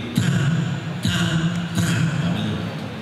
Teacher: caranya membaca ta itu ujung lidah nempel pada pangkal gigi atas. Artinya di gigi bagian atas, ya.